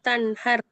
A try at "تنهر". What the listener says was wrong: ஐல என்று ஐன உச்சரிக்கப்படாது. ஈல ஈட உச்சரிப்பு வரணும். நாக்க தூக்கி தொண்டைக்குள்ள வைத்துட்டு உச்சரிக்கப்படாது. வாயில முன்பகுதியில தான் உச்சரிக்கணும் என்று போன கிளாஸ்ல அலிஃபை பத்தி சொல்லி தந்தேன். வாயில முன்பகுதியில. முன்பகுதியில முன்னுக்கால உச்சரிக்கணும். தொண்டைக்குள்ள கொண்டு போயிட்டு உச்சரிக்கப்படாது. நீங்க அயிலாண்டா தொண்டையால உச்சரிக்கிறீங்க.